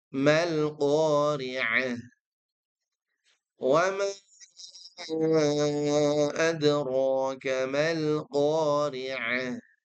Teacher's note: Pastikan ainnya betul-betul keluar dari waslul halqi, bukan dari adnal halqi. Ya, bagian tengah tenggorokan.